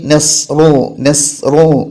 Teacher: ലൊമ്മാക്കപ്പെട്ട റാ പറയുമ്പോൾ ചുണ്ടിങ്ങനെ കൂടി വരണം